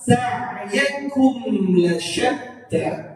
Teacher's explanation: Mim bertemu dengan lam menjadi izhar syafawi. Izhar syafawi, bacaan mim itu harus jelas.